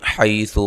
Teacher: حی یا لین ہے، ثا کو نرم ادا کرنا ہے، لمبا نہیں کرنا ہے۔